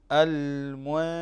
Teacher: طيب عندنا كذلك بارك الله فيك المنشآت، نون ساكن أو بعدها الشين، نون ساكن أو بعدها الشين، فتأتي بالإخفاء تخفى النون الساكن هذه عند الشين فتقرأ المنشآت